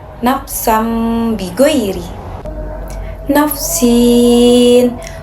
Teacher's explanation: suara nun atau tanwin berubah menjadi suara mim kemudian dibaca dengan dengung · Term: iqlab